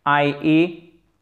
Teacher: Faites pas un H aspiré, c'est bien I sans aspiration.